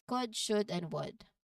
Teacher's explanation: So you don't hear a sound for that letter L.